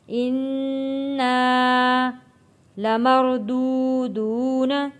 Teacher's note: یہاں پہ نون کے اوپر تشدید ہے، غنہ ادا کریں گے اور الف سے پہلے زبر ہے تو حروف مدہ ہے۔